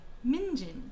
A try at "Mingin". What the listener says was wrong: Mingin. Mingin. It's Mingin. Your emphasis was wrong.